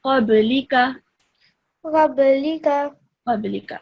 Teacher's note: Again, over here, qablika, this is again part of the qalqala. The ba is the letter of the qalqala, and so you have to produce a slight jerking sound, okay? So a ba with a sukoon on top of it is part of the qalqala rule.